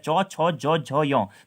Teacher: जब आपकी जीभ आपके मुंह के जो ऊपर वाला भाग होता है उसके पिछले वाले पीछे वाले भाग को टच करती है, तो वो हमारे तालव्य वर्ण कहलाते हैं।